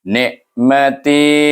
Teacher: bunyinya pergi daripada nun pergi kepada mahraj ain di tengah halqum